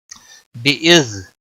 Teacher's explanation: زال پر کلکلا نہیں ہونا چاہیے